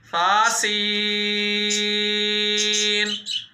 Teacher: सा नरमी से पढ़ा जाएगा, सीन सीटी के साथ।